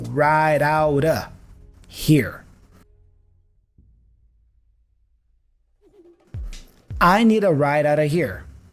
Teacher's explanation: also notice that of gets super reduced to aw sound uh only so ride out uh here I need a ride out of · the T for out is joined with the preposition of